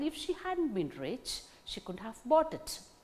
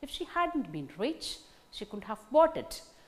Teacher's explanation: In the first unit, if she hadn't been rich, only the word rich gains the stress. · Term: tone units